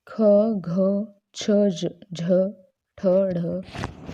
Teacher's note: जिन व्यंजनों के उच्चारण में मुख से अधिक हवा बाहर निकलती है तो वो महाप्राण व्यंजन कहलाते हैं। तो ये प्रत्येक वर्ग का दूसरा और चौथा जो व्यंजन होता है वो महाप्राण वर्ण कहलाता है।